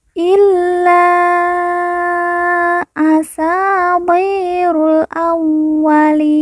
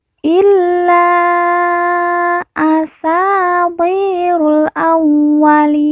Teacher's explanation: la kita baca panjang lima harakat karena di atasnya terdapat tanda baca panjang lima harakat